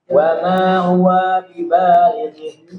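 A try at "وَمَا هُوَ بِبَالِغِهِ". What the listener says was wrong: Jangan huwa bibalighi, jangan. Wa ma huwa bibalighi. Jangan sekali-kali memanjangkan yang tidak panjang. Wa ma huwa bibalighi.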